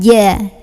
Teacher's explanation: Huruf jim keluar dari lidah bagian tengah ketemu langit-langit tengah ya. Nggak boleh ada angin, nggak boleh ca tapi ja. Giginya rapetin aja untuk membantu.